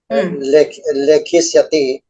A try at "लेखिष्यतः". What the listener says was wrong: लेखिष्यतः इति वक्तव्यं. लेखिष्यत इति न वक्तव्यं. लेखिष्यति, लेखिष्यतः. So here, like I said, Prathama Purusha Dvivachanam form, lekhishyatah, the visarga should be heard more clearly. That visarga wasn't heard.